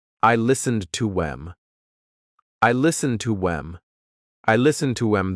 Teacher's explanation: The word them has the th cut out, and instead you're saying I listened to 'em.